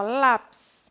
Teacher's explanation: ele já tem mais intensidade no lá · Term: sílaba tônica